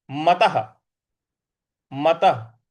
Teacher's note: त के बाद जो विसर्ग है इस विसर्ग को भी हम पूरा पढ़ेंगे ह के उच्चारण के साथ क्योंकि इसके आगे कोई भी अक्षर या कोई भी शब्द नहीं है।